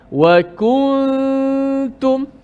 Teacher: Ku, nun kita kekalkan pada gunnah saja di hidung. Adapun makhrajnya selepas kita sebut kaf terus pergi pindah dekat ta. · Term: ikhfa